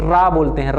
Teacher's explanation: लुंठित क्यों कहते हैं, क्योंकि इसमें जीभ जो है वो ऊपर वाले तालु को रगड़ते हुए जाती है। जब रा बोलते हैं तो जीभ लुंठित यानी रगड़ते हुए जाती है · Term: लुंठित व्यंजन